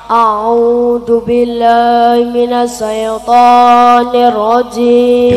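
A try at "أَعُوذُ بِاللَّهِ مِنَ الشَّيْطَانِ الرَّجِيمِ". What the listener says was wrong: A'udzu billahi minasyaitonir rajim. Ojo sae, shin ya sukun fathah, syai bukan sae. Syai.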